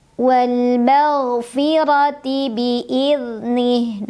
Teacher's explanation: Ra dibunyikan secara tafkhim karena ra berbaris dan barisnya di atas. Maka cara membacanya adalah ditebalkan.